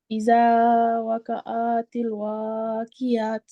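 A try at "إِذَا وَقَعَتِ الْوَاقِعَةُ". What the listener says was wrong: آئین کو کھینچے نا. اذا وقع، شارٹ میں پڑھیں گے واقعات الواقعہ.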